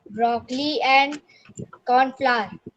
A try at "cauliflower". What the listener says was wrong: Cornflower or cauliflower? Can't you read L over there? It is cauliflower. Broccoli and cauliflower.